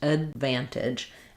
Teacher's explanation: So, letter A is going to be a schwa here, the "uh" sound. Letter D is going to be marked by lifting the tongue but not released. Advantage. And I'm going to release that on that stressed vv that follows the d. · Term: unreleased D